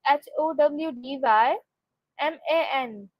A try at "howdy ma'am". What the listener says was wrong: Almost. It's howdy ma'am, not howdy man.